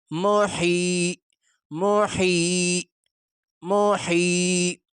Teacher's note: ہا گلے سے نکالتے ہوئے گلے پہ تھوڑا زور لگا کے